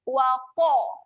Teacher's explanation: Pastikan bunyinya tebal. Waqa. Waqa. Jangan baca waqa. Kita muncungkan sedikit mulut. Waqa. Q-O. · Huruf qaf berbaris atas, saya petakan. Pastikan bunyinya tebal.